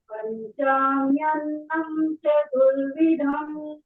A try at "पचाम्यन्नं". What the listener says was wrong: पचाम्यन्नम, पंचा नहीं, पचाम्यन्नम।